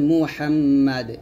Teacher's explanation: এই দালটা সাকিন হবে কলকলা হবে